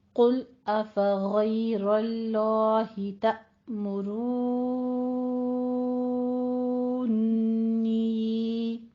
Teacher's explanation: غین کو بھی پر پڑھیں گے، اور اللہ میں لام جو لفظ جلالہ ہے اس کو بھی پر پڑھا جائے گا. تأمرو میں تا کے اوپر تھوڑا سا جھٹکا دینا ہے